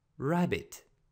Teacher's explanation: на английски не произнасяме р както на български а приглушено